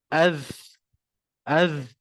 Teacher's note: Kalau kita panjangkan nafas, Kita lepaskan banyak nafas tu, dia akan jadi macam bunyi S.